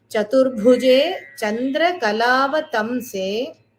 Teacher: So the bhu here is the Mahaprana. So you have to give a little more stress.